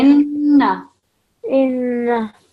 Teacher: So we're pausing, but also we remember the nasal sound that we produce with the noon mushaddad.